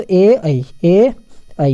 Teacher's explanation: ए और आई किससे बोले जाते हैं, कंठ प्लस तालु